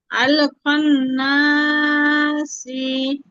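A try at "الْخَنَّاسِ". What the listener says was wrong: না, এই বলা যাবে না আপু। এখানে অক্ফ করলে শেষে যাই থাকুক হজম করে দিতে হবে, তাহলে আল খান্নাস।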